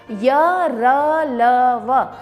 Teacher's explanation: इन वर्णों के उच्चारण में कहीं जीभ टच न होने के कारण या अंदर से निकलने के कारण इन वर्णों को अंतस्थ वर्ण कहा जाता है। साथ ही साथ अयोगवाह की तरह इन्हें भी अर्ध स्वर भी कहते हैं, क्योंकि ये जो है स्वर की तरह ही बिना प्रयत्न के या कम प्रयत्न के द्वारा बोले जाते हैं, इसलिए ये आधे स्वर है।